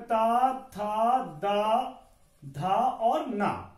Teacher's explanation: इन वर्णों का उच्चारण स्थान जो क्या है, तो दंत है